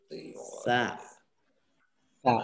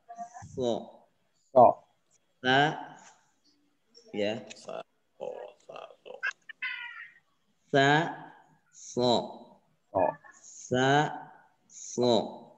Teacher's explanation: ujung lidah kita menempel pada ujung gigi seri bawah